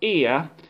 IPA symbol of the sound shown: ɪə